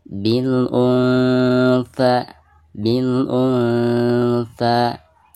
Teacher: nun sukun berhadapan dengan huruf ikhfa tha ya, maka suara nun sukun tersebut harus disamarkan dan tingkat kesamarannya itu seimbang antara samar dan gunahnya. Bil untha, jadi ketika menyamarkan nun sukun kita harus sudah mempersiapkan ke makhraj tha ya. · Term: ikhfa ausat